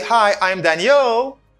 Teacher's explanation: it's a falling intonation again falling intonation because i lower my voice at the end of the sentence